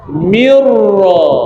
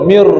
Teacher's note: Nun masuk pada ra. Nun idgham pada ra bunyi dia mirra. Mir mir terus masuk pada ra mir nun ni tidak ada lagi dah masuk pada pada ra.